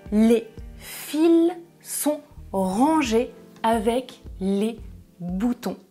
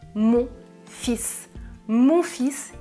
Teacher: attention je ne prononce pas le l oui c'est irrégulier